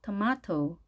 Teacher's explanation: 영국식을 할 때는 T 발음을 그대로 살려서 발음을 해줍니다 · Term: 영국식 발음